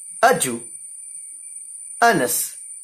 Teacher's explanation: The first one is unstressed and the second one is stressed. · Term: iamb